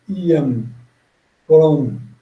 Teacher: O M é sempre aquele som fechado, sempre fechando a boca, sempre diminuindo.